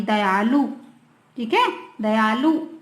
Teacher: छुटू की मात्रा आएगी, दयालु, ठीक है, दयालु। जल्दी से बोलना, छोटा ऊ का उच्चारण होगा, हमें उसे खींचना नहीं है।